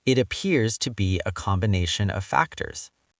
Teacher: Smooth it out. Connect the words appears to be.